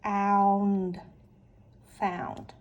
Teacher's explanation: I have OU, which is a diphthong. And so we know that says ow.